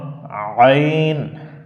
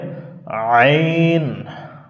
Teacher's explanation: আইনের সঠিক উচ্চারণ হচ্ছে হলকের মধ্য থেকে একটু চাপানো আওয়াজ হবে একটু চেপে পড়তে হয় যেমন আইন আমরা একটু ট্রাই করি কি হবে আইন তাহলে কণ্ঠনালীর